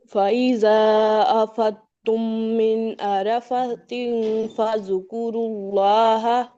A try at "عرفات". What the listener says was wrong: عرفات. بارک اللہ، فا کے ساتھ کھڑا زبر ہے، یہ ڈراپ ہوا تھا.